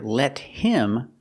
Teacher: We hear let him, the T is a fast D, let him. Because him is not an important word, it's not stressed, so the H is silent in him. So you hear let him.